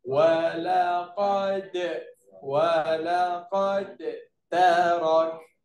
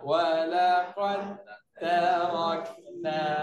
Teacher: huruf dal dia masuk ke dalam huruf ta masuk habis